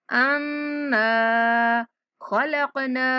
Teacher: نون پر غنہ کرتے ہوئے تھوڑا کھینچیں گے ، انا خلقنا، قاف پر کلکلا کریں گے، خلقنا، انا خلقنا